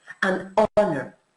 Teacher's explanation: Sin embargo, honor se escribe con H, pero es de las pocas palabras que la H es realmente muda en inglés